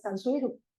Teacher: Hay una metátesis aquí entre estas secuencias suni, que se convierte en sui, y luego la última sílaba pierde su S final, pero do, en bribri, la D se pronuncia R entre vocales, entonces se convierte en R, ya Tansuiro, y la vocal del bribri es un poquito más cerrada que la O del español